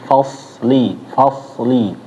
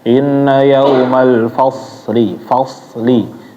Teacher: harus betul-betul tebal. Jadi jangan sampai kayak huruf sin bacanya. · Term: huruf so-nya